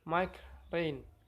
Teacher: R voiced when initial in rain